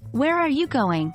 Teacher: fallen intonation much like a statement so where are you going would end with a lower pitch on going